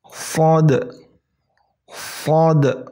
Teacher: Jadi cara menyebutkannya yaitu posisi lidah kalian itu kalian angkat mendekati langit-langit atas semua. Jadi permukaan lidah kalian diangkat mendekati langit-langit atas rongga mulut kalian. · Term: huruf shad